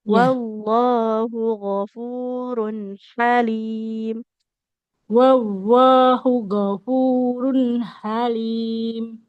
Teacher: di lafaz Allah H-nya enggak boleh panjang ya. Nah, domahnya tidak bertemu dengan wau.